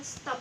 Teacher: kata tersebut diucapkan stop dengan T dengan juga lamino palatal. Dengan demikian dapat disimpulkan bahwa T pada stop disesuaikan atau diasimilasikan artikulasinya dengan S yang mendahulinya sehingga sama-sama lamino palatal.